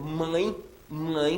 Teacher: aquele e soa como I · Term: ditongo